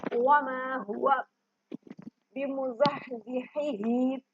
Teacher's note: حلوے والا ہا حلق کے نچلے حصے سے ادا ہوتا ہے